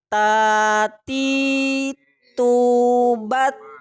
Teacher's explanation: Huruf ta ini keluarnya dari ujung lidah dengan pangkal gigi seri atas. · Di situ ada sifat hamas, nafas berhembus.